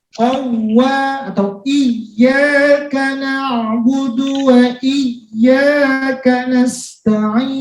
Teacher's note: Jadi intinya setiap huruf waw bertasdid dan ya bertasdid harus dinaikkan suaranya. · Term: an-nabar